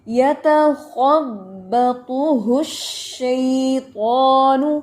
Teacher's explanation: خو میں پتہ ہے آپ کو استعلا ہے، زبان کی جڑ اٹھائیں گے اور ہمس کو واضح کرنا ہے